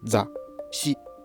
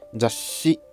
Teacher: In the first round pronunciation, the shi is cut off. In the second, it stretches into 2 beats. And what's been stretched here is the consonant part of shi.